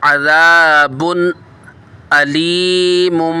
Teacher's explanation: तनवीन के बाद हुरूफ़ हलकी में से हमज़ा आ रहा है, यहाँ पर इज़हार का कायदा होगा।